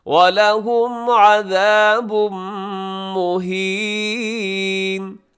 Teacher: عذابن کے آخر میں تنوین ہے، تنوین کے بعد میم ہوگا یہاں بھی ادغام اور غننے کے ساتھ۔ مہینن پہ وقف کریں گے تو مہین۔